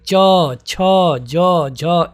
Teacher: है तालव्य यानी कि जो तालू होता है वहां से आपको आपकी जीभ उस आपके तालू पर टकराती है